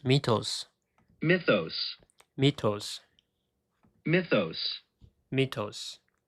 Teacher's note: So the stress is in the first syllable, right?